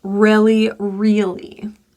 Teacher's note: Make sure that it's not touching the space behind your front top teeth so it doesn't sound like a trill or a flap. The American R is a rhotic R, so we want to pull the tongue tip back and feel it bunched and tense in the mouth.